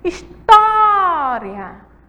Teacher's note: A sílaba forte aí é o tó, certo? Ela é a penúltima sílaba e ela vai receber um acento por quê?